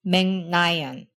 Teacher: we have to replace the voiceless consonant with the nasal consonant, pronounced in the same spot in your mouth. K-like consonants turn into back NG sounds.